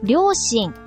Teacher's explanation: Ang ryushin ay may pitch accent na high-low, low-low, low. Dito rin, sa simula pa lang, ay nagbabago na ang taas ng tunog.